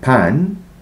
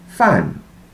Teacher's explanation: on the bottom half we have the unvoiced sounds bilabial pan labiodental fan